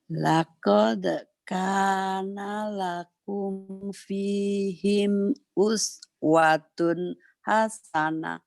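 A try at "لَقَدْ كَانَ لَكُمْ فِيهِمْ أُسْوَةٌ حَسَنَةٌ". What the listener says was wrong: itu nadanya yang suaminya tinggal pergi kemana sedih banget gitu ya. Jadi ibu ceria ya bu, kayak nyanyi Halo Halo Bandung gitu, kayak maju tak gentar. Laqad kana lakum laqad kana lakum fihim uswatun hasanah.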